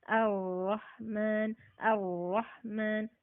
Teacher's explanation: R misalnya ar-Rahman, ar-Rahman, tebalnya dapat tapi takrirnya nggak dapat